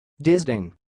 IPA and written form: dɪsˈdeɪn (disdain)